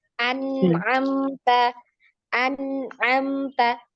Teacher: coba sempurnakan huruf ain di tenggorokan bagian tengah. An ya, a di tenggorokan bawah dulu.